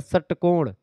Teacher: षटकोण में जीभ थोड़ा सा और मुड़ जाती है